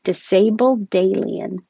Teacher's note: you'll hear the d if it connects to a word with a vowel after it